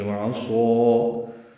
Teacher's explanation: عین وسط حلق سے ادا کریں گے